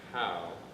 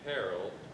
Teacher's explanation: If you say how, it starts with a slight breathy sound. · One is softening up your start by using what I call the H technique, which means if you say a word that starts with H, you'll notice that you let out a tiny little breath, a tiny little amount of breath when you say that word.